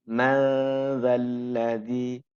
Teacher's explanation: Jadi nun dileburkan pada makhraj dzal sehingga muncul nuansa samarnya.